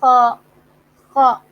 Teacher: خ حلق سے بات آئی، خ، تھوڑا سا زور لگایا